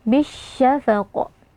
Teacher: Dan terakhir, karena huruf qaf di sini kita waqafkan dan kita berhenti, maka huruf qaf ini berlaku hukum qalqalah kubra. Jadi kita harus memantulkan bunyi atau suara pada huruf qaf ini dengan suara yang agak kuat. Bisyafaq.